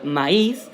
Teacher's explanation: Y si es una vocal abierta y una cerrada, pero la fuerza de voz, esa sutil fuerza de voz, no está en la abierta como antes en el diptongo, sino que está en la cerrada, como pasa en el caso de la palabra maíz, hay una ligera fuerza de voz mayor en la I, que es una vocal cerrada, entonces se separa, es hiato